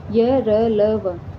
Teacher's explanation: इसमें क्या होगा? स्वर तंत्रियों में कंपन हो रहा है। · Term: सघोष